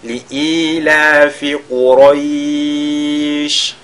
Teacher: le shin sur lequel on marque la pause, on fera At-Tafashi, n'est-ce pas, qu'il y ait de la propagation de l'air lorsqu'on prononce cette lettre-là